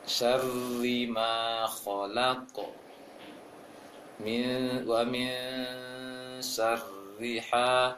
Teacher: getaran ro masih harus ada, jangan sampai hilang. Hanya saja tidak boleh terlalu banyak getarannya. Syar tidak seperti itu kali, tetapi dia harus nampak juga getarannya.